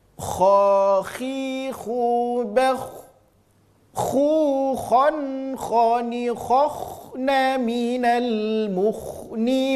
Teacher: huruf kha dan huruf gha. Hurufnya keluar dari ujung tenggorokan.